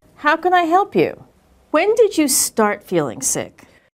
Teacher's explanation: When she asked a question that began with when or how, her intonation was falling